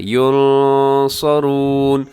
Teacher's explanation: یہاں نون ساکن کے بعد صاد ہے تو آپ نے یہاں پر کیا کرنا ہے جی؟ اخفا کرنا ہے، ينصرون، ایسے آپ اس کو پڑھیں گے۔